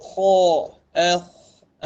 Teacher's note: Jika mengucapkan huruf-huruf isti'la, seluruh lidah dan khususnya pangkal lidah meninggi, naik, terangkat yang menyebabkan suara menjadi tebal dan kuat. Tersebut kha, dia terangkat, atau pangkal lidah kita terangkat.